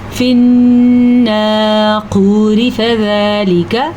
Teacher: پھر را باریک پڑھی جائے گی